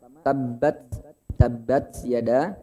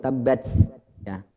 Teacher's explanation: tabbat itu ujung lidah di langit-langit atau di gusi atas, di seri atas. Dia huruf ta itu satu tempat dengan to dan dal.